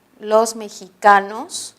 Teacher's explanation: vemos que en este caso la letra X, la letra, está representando al sonido fricativo velar